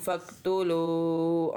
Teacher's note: یہاں پہ ہم نے قاف کو موٹا بھی پڑھنا ہے اور ایک الف جتنا لمبا بھی پڑھنا ہے، کیونکہ اس کے ساتھ الف ہے۔ یہ حرف مدہ ہوا۔